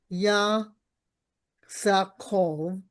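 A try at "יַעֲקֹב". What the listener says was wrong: Ya'a. It's an ayin. Yaakov.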